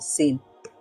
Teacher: দুই দাঁত বন্ধ করে জিহ্বার অগ্রভাগ সামনের দাঁতের পেটের সাথে লাগিয়ে উচ্চারণ করতে হয়